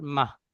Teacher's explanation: গোল তা রয়েছে, গোল তাটি হা সাকিনের মতো পড়তে হবে। তাহলে হা সাকিন হলে মিম হা জাবার মাহ।